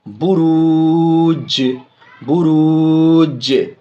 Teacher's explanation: جیم میں آواز لوٹے گی، جیم ساکن ہے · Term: قلقلہ